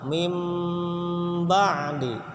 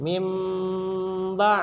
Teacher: mimbadi itu juga harus berdengung suaranya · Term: iqlab